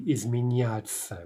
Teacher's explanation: Again, we're getting a ya. The N is remaining soft.